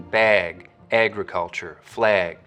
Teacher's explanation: you'll also start to get raising and tensing in the trap vowel when it comes right before a g sound